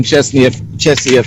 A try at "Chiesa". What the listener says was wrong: I think it's Chiesa. Because the I comes before the E.